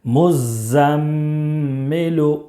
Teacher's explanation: میم میں 1 الف کے برابر غنہ کریں گے، اس لیے کہ میم مشدد ہے، مزمل۔ میم دال پیش مد، دال ثا زبر دث، مدث، ثا زیر ثی، مدثی، را پیش رو، مدثر، مدثر۔